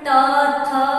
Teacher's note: जब हम बोलते हैं त और थ बोलते हैं तो हमारी जीवा जो होती है वो दांत को स्पर्श करती है, इसीलिए इसे दंत कहा गया।